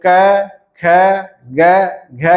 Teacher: कंठ पर आघात होने के कारण क ख ग घ और न का उच्चारण होता है · लेकिन यही महाप्राण ध्वनि, यही अ ध्वनि जब बाहर निकलती है तो जब हम कंठ पर अवरोध किए जाते हैं, कंठ पर अवरोध किया जाता है तो क्या होता है कि क वर्ग के वर्णों का उच्चारण संबंध होता है। यानी जब ध्वनि अ को कंठ पर अवरोध किया जाता है तो क, ख, ग, घ की ध्वनि उत्पन्न होती है। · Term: कंठ ध्वनि